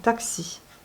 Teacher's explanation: on prononce comme taxi avec la syllabe, avec un accent sur la dernière syllabe.